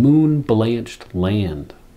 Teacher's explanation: we get the repetition of short A and L sounds in moon-blanched land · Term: assonance